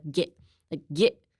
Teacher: So if you want to sound more fluent, I would say drop the T